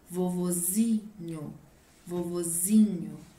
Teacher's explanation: A minha sílaba mais forte é a última, aonde está o acento circunflexo, no grau substantivo, no substantivo com grau normal. Mas se ele estiver no grau diminutivo, ele perde o acento e aí a sílaba tônica passa a ser a sílaba zi.